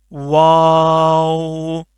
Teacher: پہلے دونوں ہونٹوں کو آپ نے گول کرنا ہے، پھر کھولنا ہے، پھر اینڈ میں پھر دوبارہ گول کرنا ہے